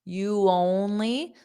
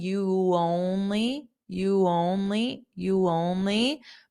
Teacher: notice a little bit of a Y sound